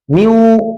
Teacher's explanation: یہاں نون کی جو صفت غنہ ہے وہ باقی ہے. میو، یہ نون کا جو صفت غنہ ہے، نون کی جو صفت غنہ ہے یہ باقی ہے، تو اس لیے یہ ادغام ناقص ہے.